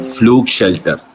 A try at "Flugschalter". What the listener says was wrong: No, it is not shelter. It is not shelter. What is it?